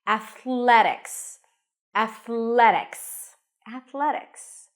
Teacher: as a soft D it's called a flat te Athletics Athletics the primary stress is the a sound and there are a lot of challenging consonants in this word